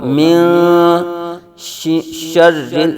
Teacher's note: نون ساکن کے بعد حروف اخفا میں سے شین آ رہا ہے تو یہاں پھر غنہ ہو جائے گا، اخفا ہوگا ۔ من شر رل، شین را زبر شر، را لام زیر